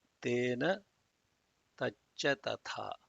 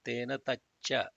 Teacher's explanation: there has to be Mahaprana on the Cha